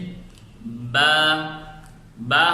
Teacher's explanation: جیسے با ہم اس کا مخرج دونوں ہونٹ ہیں، دونوں ہونٹوں کے تری والے حصے کو آپس میں ملانے سے با ادا ہوتا ہے